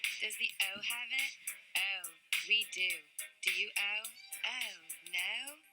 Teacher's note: But the Maryland O, right? So it's very fronted.